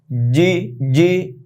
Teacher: জিম, জিব্বার মধ্যখান উপর লাগিয়ে বলতে হবে